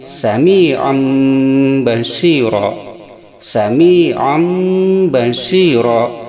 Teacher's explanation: Iklab itu berarti menggantikan n pada m, maka dibacanya n menjadi m.